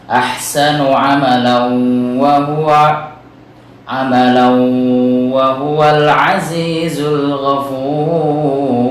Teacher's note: kita leburkan atau masukkan tanwin fathah tersebut ke dalam waw dan minimal ditahan bacaannya 2 harokat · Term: idgham bi gunnah